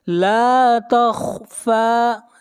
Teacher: لا کو کھینچ کر پڑھیں گے 1 الف کے برابر، یہاں پر الف مدہ ہے. تخفى، خا کو موٹا پڑھیں گے، خا حروف مستعلیہ میں سے ہے، اور فا کو کھینچ کر پڑھیں گے 1 الف کے برابر، فا کے اوپر کھڑی زبر ہے.